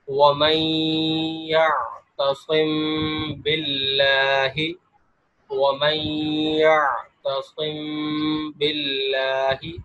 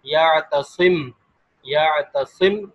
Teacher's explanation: اگر میم ساکن کے بعد با آ جائے تو غنہ مع اخفا ہوگا، یعنی یہاں پر اخفا اور غنہ ہوگا۔